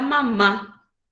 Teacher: la palabra mamá se carga la voz en la última sílaba